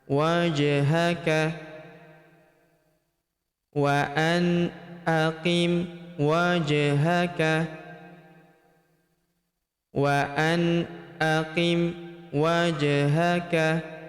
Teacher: Huruf ja berharakat sukun kita pantulkan atau kita qalqalahkan